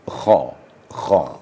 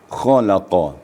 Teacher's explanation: mendekat antara ujung tenggorokan dengan pangkal lidah. Jadi di situ keluar makharijul hurufnya. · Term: huruf kha